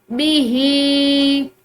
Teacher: बिस्मश्तरौ बिही, हा के नीचे ये चूंकि जेर भी है और ऊपर ये छोटी मद भी है, तो इस हा को हम लंबा करके पढ़ेंगे